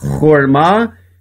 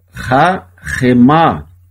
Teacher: O Shevá aqui ele é mudo, por isso que lê horma, e aqui ele é pronunciado rahemá